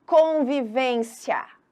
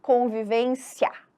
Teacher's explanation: E isso é tão verdade que é do fraco para o forte que o I ele quase some na hora da fala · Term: ditongo crescente